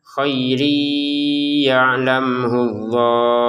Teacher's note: tanwin bertemu ya ini baca dengan dengungan dimasukkan khairi yaullah.